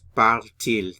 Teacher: when the verb form ends in a vowel, for il and elle, we have to insert what we call the euphonic T to make it sound good.